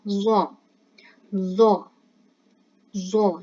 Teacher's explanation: Lidah kita itu berada di antara gigi yang di atas dan di bawah.